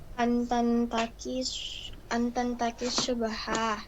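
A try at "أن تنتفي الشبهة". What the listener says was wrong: Ya, antan tafi ya, fi bukan qi. Antan tafi syubhah.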